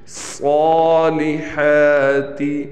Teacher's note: ہا پر بھی کڑا زبر ہے، اس لیے اس ہا کو ہم کھینچے تو ایک الف کے برابر اس ہا کو کھینچیں گے